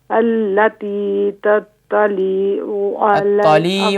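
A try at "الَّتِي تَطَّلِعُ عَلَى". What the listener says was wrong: تطلع، تطلع نہیں، التی تطلع، تطلع. آج تو کافی بہتر ہے آپ کی ماشاء اللہ سورۃ الہمزہ بقیہ دنوں کی بنسبت، لیکن تھوڑا سا غور کیجئے اپنی حرکات پر کہ حرکات کو تھوڑا سا کھینچ لیتی ہیں.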